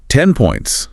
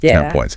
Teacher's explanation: So like in 10 points that N often sounds more like an M. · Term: Assimilation